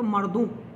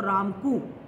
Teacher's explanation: ओ और औ के लिए भी हमें प्रवृत्ति मिलती है कि उसको ऊ कर दिया जाता है। जैसे मर्दों शब्द हो तो मर्दू, जैसे राम को शब्द है तो रामकू, ये हमें देखने को मिलता है।